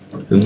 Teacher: Dhu itu ujung lidah digigit dia. Dhu, seperti itu.